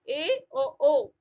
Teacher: अर्ध समृद्ध आधा बंद मुंह रहेगा, इसमें दो रहेंगे, ए और ओ।